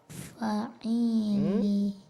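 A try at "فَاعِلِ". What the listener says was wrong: Fa-nya ada garis, ada alif di situ dibaca. Fa'ili. Fa'ili.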